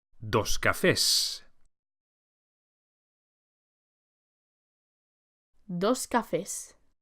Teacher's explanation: As you can see, just as in English, an S is added to make the noun plural. But please take care to pronounce the plural S as a S and not Z, as with many plurals in English.